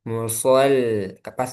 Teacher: Muso tebal, lamnya tipis.